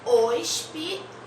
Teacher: A sílaba tônica é tal.